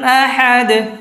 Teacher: দালের মধ্যে যদি সাকিন হয় তাহলে ওইটা কলকলা হবে